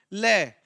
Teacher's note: ल को हम क्या बोलते हैं यह पार्श्विक होता है